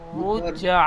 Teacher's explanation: আইন খাড়া যাবার আ, খাড়া যাবার একটা টান দেবেন